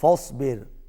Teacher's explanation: صاد موٹا اور را باریک